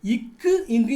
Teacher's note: இக்கு இங்கு நாவின் முதல் அன்னத்தின் அடை.